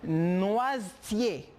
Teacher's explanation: La E no sale. Por lo tanto, la S viene ser como una Z.